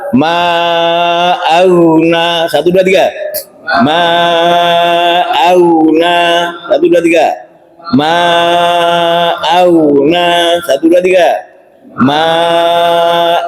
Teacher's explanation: Harusnya ma'auna, ya. Ma-nya dibaca panjang 4 harokat ya.